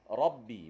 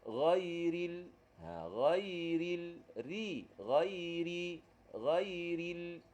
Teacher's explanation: ra tebal ni pangkal lidah juga terangkat. Saya ambil contoh ra bagi atas.